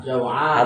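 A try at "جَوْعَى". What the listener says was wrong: Hadap nun ya. Hilangkan nunnya. Jau'a.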